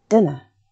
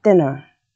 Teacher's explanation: the schwa sound comes just before the rhotic R in standard British English and in standard American English. Pertain in standard British English would be pronounced pertain, and in standard American it would be pronounced pertain.